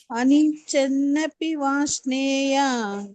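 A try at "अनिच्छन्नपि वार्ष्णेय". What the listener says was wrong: ವಾರ್ಷ್ನೇಯ ಅರ್ಕ ಮೊದಲು ಬರಬೇಕು ವಾರ್ಷ್ನೇಯ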